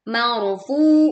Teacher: ro sukun didahului oleh fathah sehingga dibaca tebal, marfu, funya panjangnya dua harakat, marfuah.